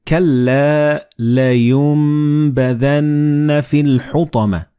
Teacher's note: the noon and ba, they will be assimilated together and you will pronounce them as meme